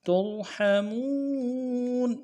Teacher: را کو موٹا کریں گے، حا کو گہرائی سے ادا کریں گے